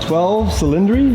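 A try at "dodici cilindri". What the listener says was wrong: Dodici, is 12. Dodici, Cylindri, like cylindri. You can say 12 cylinder in English, but in Italian it's Dodici Cylindri.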